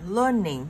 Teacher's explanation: Learning, mình có trọng âm 1 nên sẽ nhấn ở chữ learn.